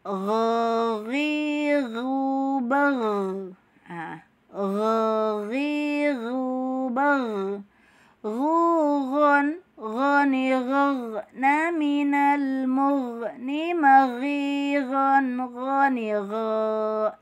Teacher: Sifatnya itu yaitu adanya getaran, mengalirnya suara, dan pangkal lidah terangkat. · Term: huruf ghain